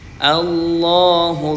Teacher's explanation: Dal ini disukunkan karena waqaf. Maka dal di sini dibaca qalqalah wustah memantul sedang.